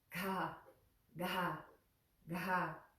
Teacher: got that puff of air again